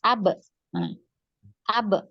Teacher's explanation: kita akan mendapati suara ba itu keluar dari kedua bibir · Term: huruf ba